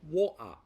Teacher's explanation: The glottal stop is a sound made from the throat rather than the T that comes from the front of the mouth